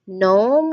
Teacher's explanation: That g, that g doesn't make a sound at all. So you start reading this word on the n sound.